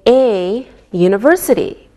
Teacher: We say a university because university sounds like a Y sound.